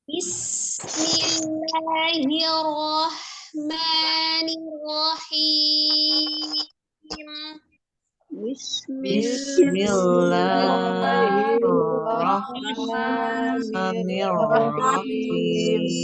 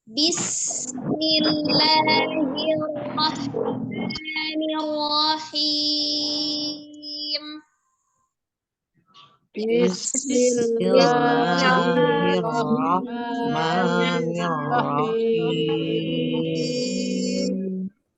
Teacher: Hameskan bunyi sin sukun ya, tidak dijedah bismi tapi alirkan ya. Ada udara yang mengalir ketika mengucapkan huruf sin ya.